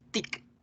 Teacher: fíjense en cómo con la T la lengua no aparece por ningún lado ahí enfrente de los dientes